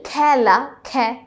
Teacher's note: খ্যা উচ্চারণ হচ্ছে এটাই আমাদের বিবৃত উচ্চারণ